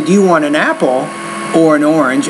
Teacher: Apple has the rising tone Orange has a falling tone because I'm presenting the contrast